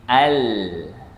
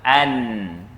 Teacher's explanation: tiga-tiga huruf ni hujung lidah dinaikkan ke langit-langit atas bahagian depan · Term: Lam, nun dan ra